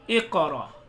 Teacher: हमजा साकना के पढ़ने में झटका होता है